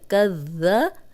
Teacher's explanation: کاف زبر دال کد، دال زبر ذا، کد ذا۔ اب ذال نرم ہے، سیٹی کی آواز نہیں آنی چاہیے ورنہ زا بن جائے گا۔